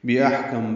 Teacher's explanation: حمزہ ہا وسط حلق سے ادا ہوگا، اس میں ہمس ہوگا، سانس جاری رہے گی